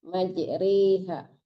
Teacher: Itu namanya imalah ya bacaan garib ya cuma satu-satunya di Al-Qur'an ya yang tulisannya fathah tapi dibaca e